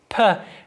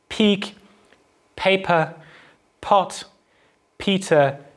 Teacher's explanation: Voiceless bilabial plosive is the sound p, as we find at the start of words like peak, paper, pot, peter